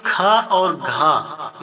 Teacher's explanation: लेकिन खा बोलकर देखिए, खा और घा इन्हें बोलेंगे तो थोड़ा तेजी से बोलना पड़ता है और बोलते समय मुख से बहुत अधिक हवा निकलती है, इसलिए इसे महाप्राण कहते हैं